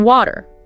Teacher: It's a little catch in the throat instead of a crisp t.